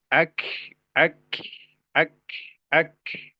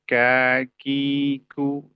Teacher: terlalu melebih-lebihkan alhamsu yang ada dalam huruf kaf. Cukup dengan ka k tidak kiku.